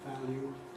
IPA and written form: ˡvælju (value)